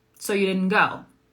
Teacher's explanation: like that's a question, but I'm not asking it with the typical question intonation